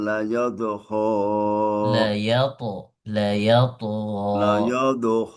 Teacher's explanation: belum sampai ke th, hanya sampai ke huruf d saja. Layat yat sedikit dipantul dan ditekan.